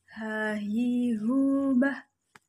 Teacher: Huruf selanjutnya adalah huruf H. Huruf H keluar dengan tenggorokan yang terjauh.